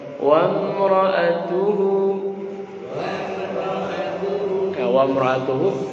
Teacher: wa mra'atuhu diangkat di tu-nya